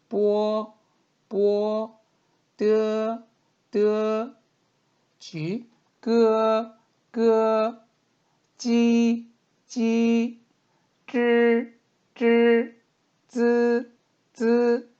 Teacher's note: 발음을 할 때 제가 숨을 터트리지 않습니다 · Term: 무기음